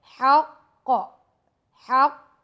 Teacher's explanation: ہا middle part of throat سے ادا ہوگا، قاف کو موٹا پڑھیں گے